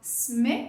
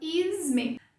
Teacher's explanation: O segundo nome, né, sme, começa com S. A gente põe um I lá no começo, ou seja, a gente põe um som que não existe. Aí, em vez de falar sme, a gente fala isme.